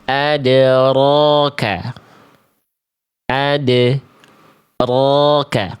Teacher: jadi getarannya ada tapi enggak banyak-banyak tapi tetap jelas. Bukan berarti hilang getarannya. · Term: takrir